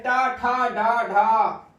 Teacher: हिंदी में भी मूर्धन्य है, इनका उच्चारण स्थान मूर्धा ही है